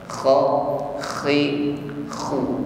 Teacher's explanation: huruf ko harus ada bunyi dengkur ya ngorok tapi dengkurnya lembut saja ya